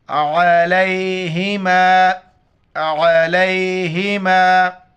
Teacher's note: عین کو گلے سے ادا کریں گے ، لام کو یا کے ساتھ ملائیں گے، یہ جزم ملانے